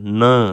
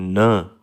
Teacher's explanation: the tip of the tongue comes into contact with the back of upper teeth and forms a closure। न देखें ना, न बोलेंगे तो ये हमारी ज़ुबान वो जो उसकी जो टिप है वो अपर जो टीथ हैं उनके बैक पार्ट पे आके रुकी रहती है, यानी न, उससे वो क्लोजर बनता है जिससे हमारी जो आवाज़ है वो नाक से भी जाती है।